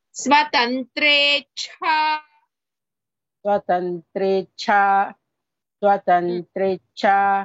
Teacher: स्वतंत्रेच्छा one cha is alpa prana, other cha is mahaprana.